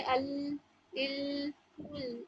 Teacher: ये जुबान का जो आगे का हिस्सा है वो आपके सामने के ऊपर के दांतों के एट टिप्स में टच होगी। ओके, तब जाके लाम की मुकम्मल अदायगी होगी।